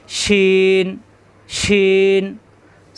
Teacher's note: শাসা আওয়াজ হবে জিহ্বার মাঝখান উপরে তালুতে চাপ দিয়ে শিন শিন।